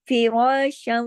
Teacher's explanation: فا باریک، را کو موٹا، کس کی وجہ سے؟ زبر کی وجہ سے. اب دیکھیے شین کے اوپر 2 زبر کی تنوین ہے.